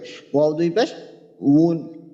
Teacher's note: যেন দুই ঠোঁট থেকে উচ্চারিত হয় দুই ঠোঁটের মধ্যখান থেকে হ্যাঁ ওয়াও যেন গলার ভিতরে না যায় ওয়াও যেন ঠোঁটেই থাকে দুই ঠোঁটের ভিতরে